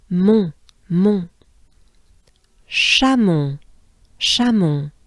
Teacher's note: we have the sound Mon. It's pretty closed up and nasal